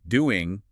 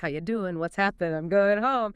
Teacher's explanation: It's a very common feature, especially in informal situations or when the ing word isn't stressed. It's a shift from a velar nasal to an alveolar nasal N.